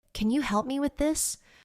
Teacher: Did you notice how the voice goes up slightly at the end of the question? That rising sound is important. It signals that you are asking, not telling.